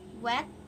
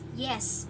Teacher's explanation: W is a bilabial and y is a palatal. Keduanya ini w and y is a voiced.